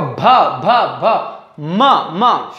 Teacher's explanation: ओष्ठ व्यंजन मतलब होठ को टच कर रहे हैं, होठ को स्पर्श कर रहे हैं